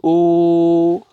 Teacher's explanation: واو سکون سے پہلے ضمہ آ رہا ہے تو کھینچنا ہے